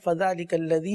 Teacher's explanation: ذال پر کھڑی حرکات ہے، کھینچ کر پڑھیں گے